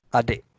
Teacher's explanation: And the K with the glottal stop. So I changes into E and K with the glottal stop.